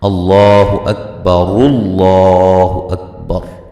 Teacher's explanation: یہ جو حمزہ وصلی ہے یہ درمیان میں سے گر جائے گا